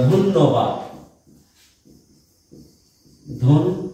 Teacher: এই ধটা উচ্চারণ করার সময় ঠোঁটটা গোল হয়েছে তাই ওকার হয়েছে